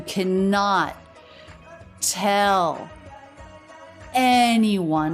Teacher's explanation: we have three stressed syllables in a row the two unstressed syllables at the end of anyone just come